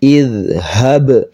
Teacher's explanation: Nah, ini huruf dzal di ujung lidah, ha-nya yang besar, ba-nya ini qalqalah, namanya qalqalah sugro ya, ada sukunnya, maka dipantulkan